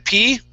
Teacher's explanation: no vibration there, okay? Okay, it's a puff of air